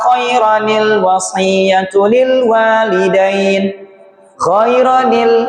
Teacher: Fathah tanwinnya hilang, dia berlaku fathah biasa, lalu masukkan nun wikoyah kecil.